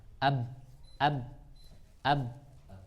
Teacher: enggak ada keluar lagi nafas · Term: jahar